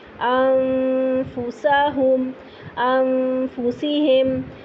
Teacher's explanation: انفسہم، اب یہاں پہ زبان نیچے رہے گی، زبان تالو سے نہیں چپکے گی، فا کے مخرج پر آپ چلے جائیں گے اور تھوڑی دیر تک غنہ کریں گے فا پر